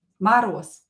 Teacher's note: You can hear that I pronounce this Z as S here